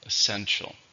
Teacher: Essential is an adjective or a noun. There are 3 syllables. Essential. Stresses on the second